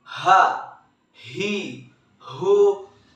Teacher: huruf ini keluar dari tenggorokan yang terjauh